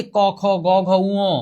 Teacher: এগুলো সব উচ্চারিত হয় হচ্ছে কণ্ঠ বর্ণ, কণ্ঠ থেকে।